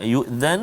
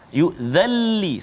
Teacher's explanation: masukkan bunyi nun itu ke dalam lam tanpa dengung. Jangan yu'dhan, salah. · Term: idgham bila gunnah